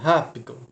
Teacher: Como eu falo rápido, essas duas últimas sílabas, e a sílaba mais forte, ra, eu dou mais ênfase